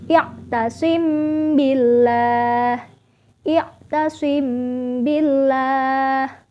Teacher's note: Cara membacanya adalah sedikit mendengung ya, karena ikhfa. Jadi sedikit mendengung. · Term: ikhfa syafawi